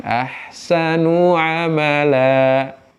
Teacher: Dan mad iwad itu fathatain yang berubah menjadi alif saat berhenti, saat diwakofkan. Amala, kadar panjangnya 2 harokat.